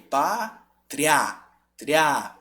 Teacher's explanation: O A é mais forte. Ele vem depois, quer dizer que o som está crescendo.